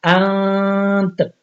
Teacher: اب دیکھ لیں نون تو پہلے سے ساکن ہے، تا بھی ساکن آ گیا، اب اس طرح کریں گے انت، تا کی آواز ہلکی سی آئے گی تاکہ پتہ چلے یہاں پہ تا بھی موجود ہے۔